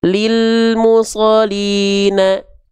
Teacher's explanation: Lil musolina al-nya enggak ditekan kalau enggak ada tasdid.